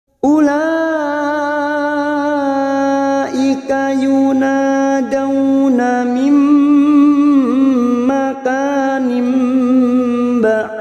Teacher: terdapat huruf dal yang mati di akhir kalimat dan dibaca waqaf qalqalah kubra